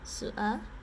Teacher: She almost has like a glottal stop.